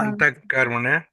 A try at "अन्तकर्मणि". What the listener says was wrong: అంతః కాదు, అంతకర్మణి. అక్కడ ఆగొద్దు. ఆగితే వేరే అర్థాలు వస్తాయి.